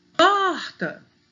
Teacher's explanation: Então, elas são oxítonas. Porta, o por é mais forte